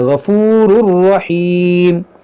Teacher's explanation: ये तनवीन के बाद रा है, तो यहाँ पर इदगाम करेंगे